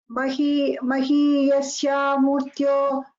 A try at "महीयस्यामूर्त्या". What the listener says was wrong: it is Murtya. Not Murtyo.